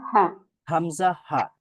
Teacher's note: হা তো হামজা হা উচ্চারণের জন্য আমাদের তেমন কোন অর্গানস বলতে শুধুমাত্র হলকের শুরু মানে গলার শুরু থেকেই আমরা উচ্চারণ করতে পারি হামজা হা